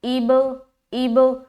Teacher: قلقلہ بھی کر رہے ہیں کیونکہ با کے اوپر سکون ہے اور با حروف قلقلہ میں سے ہے، تو اب، اب۔